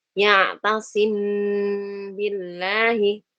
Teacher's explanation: Mim sukun bertemu ba, ya ikhfa syafawi dan juga pasti disertai dengan gunnah.